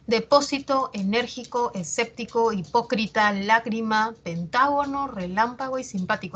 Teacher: Vamos a ver la siguiente, la regla de las esdrújulas, también llamadas proparoxítonas. A nivel prosódico o a nivel oral, van a llevar la mayor fuerza de voz en la antepenúltima sílaba